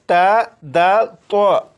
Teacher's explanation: زبان کی نوک جب اوپر یعنی سامنے والے 2 دانتوں کی جڑ سے لگے تو اس سے تا، دال، تو ادا ہوتے ہیں